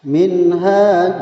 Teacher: Minha itu nun mati bertemu dengan huruf ha itu disebut dengan idhar, harus dibaca jelas. Sedang hanya adalah mad asli panjangnya 2 harakat atau 1 alif.